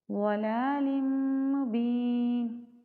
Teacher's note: ادغام مع الغنہ کرے ہیں کیونکہ نون تنوین کے بعد حرف یرملون میں سے میم ہے